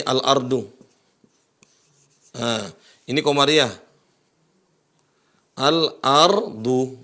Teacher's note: Nah, ini qamariyah. Al-ardu. Nah, lamnya muncul al.